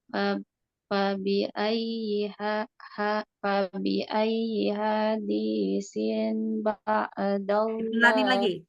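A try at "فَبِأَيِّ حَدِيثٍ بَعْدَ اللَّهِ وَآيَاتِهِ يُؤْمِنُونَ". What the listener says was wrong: Pelanin lagi sayang. Pelanin lagi temponya. Pelanin kayak gini. Fabi ayyi hadisim.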